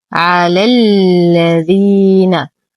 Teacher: ننتقل من فتحة اللام الأولى إلى إسكان اللام المشددة